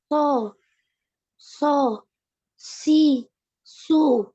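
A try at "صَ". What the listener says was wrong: masih kurang tebal ya. Dinaikkan selain pangkal lidahnya, naikkan juga permukaan lidah. Permukaan lidah ini lidahnya ya, lidahnya semua kecuali tengah lidah. Semua lidahnya naik kecuali tengah ya. Nah, itu permukaan.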